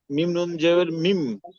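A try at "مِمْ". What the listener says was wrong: হ্যাঁ তাহলে পরিবর্তন করে ওটা কি, ওটাকেই বলেন, তাহলে নুন কেন বলতেছেন, তাহলে মিম বলতে হবে না?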